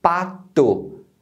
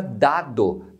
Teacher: a língua então a articulação do som é no mesmo ponto A diferença é que o d é um som chamado de voice porque você usa as cordas vocais e o t é um som Voice léssica você não usa